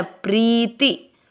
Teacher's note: आपको प्री की मात्रा खींचनी, ती की नहीं।